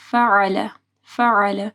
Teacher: عین کو گلے کے درمیانی حصے سے پڑھنا ہے